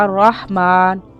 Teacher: हा की आवाज हलक से निकालें और माँ को थोड़ा सा लंबा करेंगे